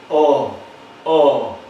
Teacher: vocal posterior semi abierta sería un sonido más o menos como éste